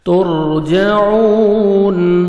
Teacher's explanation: ترجعون، واو مدہ 1 سیکنڈ اپنے عین کو کھینچنا ہے اور عین کو اپنے صحیح مخرج سے ادا کرنا ہے.